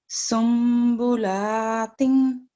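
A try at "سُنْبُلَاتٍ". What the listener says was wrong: थोड़ा सा और खींचे।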